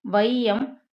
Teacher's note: வையம் முதல்ல வரும்போது ஒரு 1.5 மாத்திரை அளவுக்கு குறையுது. ஸோ ஃபஸ்ட்டு எடுத்தோடனேயே 2லேருந்து அரை குறையும்னு வச்சுக்கோங்க. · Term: ஐகார குறுக்கம்